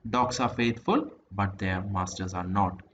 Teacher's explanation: Now for example, when one utters the sentence dogs are faithful but their masters are not എന്ന് പറയുന്ന sentence പറയുമ്പോഴത്തേക്കും a pause is made after faithful to clarify the sense. നമ്മൾ ആ sense clarify ചെയ്യാൻ വേണ്ടിയിട്ട് നമ്മൾ എവിടെ പോസ് ചെയ്യും, ഈ കോമ ഇൻഡിക്കേറ്റ് ചെയ്യുന്ന പോലെ നമ്മൾ അവിടെ ചെറുതായിട്ടൊന്ന് പോസ് ചെയ്യും. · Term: tone group boundary